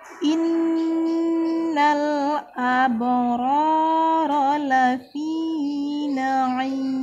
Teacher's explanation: ada huruf ba sukun, maka kita baca dengan dipantulkan karena termasuk salah satu huruf qalqalah